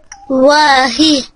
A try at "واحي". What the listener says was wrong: لا أنت تنطق الحاء هاء خطأ. واحي حي يكون في الحاء بحة. واحي